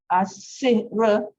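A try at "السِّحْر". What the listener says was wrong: Tidak. Ra tak boleh dibariskan. Dia mati. As-sihr.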